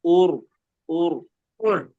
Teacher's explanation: Urnya jangan ditarik lagi. Jangan ditarik jadi tipis tapi tetap tebal. Kalau ditarik tipis kan jadi UR.